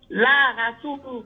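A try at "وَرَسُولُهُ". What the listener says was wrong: Non, faut dire wa. W quoi? Wa rasuluhu.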